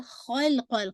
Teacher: خا کو ہیوی کیجیے گا، قاف کو لام کے ساتھ ہٹ کیجیے گا. ٹھیک ہے، لیکن باؤنس افیکٹ نہیں ہے، تھوڑا سا ٹائم دیجیے.